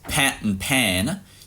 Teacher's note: you can hear that pat has a slightly lower vowel than pan. And it's sort of getting raised back up to its previous position, pre-nasal. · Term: trap vowel